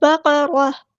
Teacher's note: قاف ہمارا heavy letter ہے، را بھی ہمارا ہیوی لیٹر پورا ادا کریں گے اور یہاں پہ ہم وقف کریں گے۔